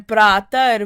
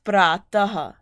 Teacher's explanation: because this final ra is being replaced by a visarg